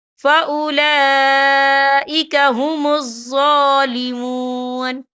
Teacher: یا دیکھیں فَأُولَا، لام کے پر کھڑی حرکات ہے اور اس پر مد بھی ہے، یہ مد جو ہے مد متصل ہے، اس کی مقدار 4 حرکت کے برابر ہے، تو ہم اسے 4 حرکت کے برابر کھینچ کے پڑھیں گے۔